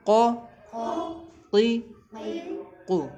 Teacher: یہ جو قاف ہے یہ اپنی زبان کی جڑ جو ہے تالو کے نرم والے حصے پہ لگتی ہے